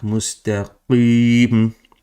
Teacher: qaf comes from the back of your tongue, almost touching the small tongue on the top.